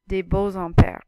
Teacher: when you pronounce it, that X slides into the I and makes a Z sound. It's called a liaison.